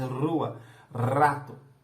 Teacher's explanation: Nós estamos falando dessa vibrante. Ela vibra, a caixa vocal vibra quando você faz rua, rato.